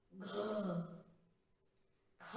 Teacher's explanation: ऐसा लग रहा है जैसे हम ह भी साथ साथ बोल रहे हैं, हकार भी निकल रहा है, यही महाप्राण कहलाते हैं।